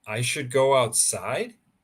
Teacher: if you say it in a rising tone it will be a question